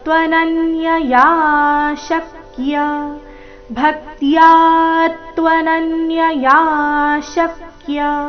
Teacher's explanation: ತ್ವನನ್ಯ ನ ಮೇಲೆ ಆಘಾತ